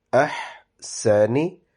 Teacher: Ha is pronounced from your throat, but a very light sound, and it does not have a kalkala